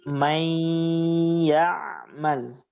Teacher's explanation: Nah, ketika kita membaca may, di situ harus ada gunnah. Ketika kita membaca ya, gunnahnya hilang karena ya sendiri tidak ada sifat gunnah. Kita baca gunnah may itu karena ada huruf nun.